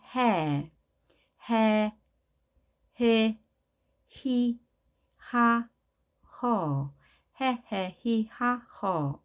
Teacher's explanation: H는 흐 소리죠. 우리 목구멍에서 나오는 가장 깊은 곳에서 나는 소리입니다. 흐 소리인데요. A가 있으면 해, 히, 하, 허, 히, 하, 허 라고 발음이 되죠.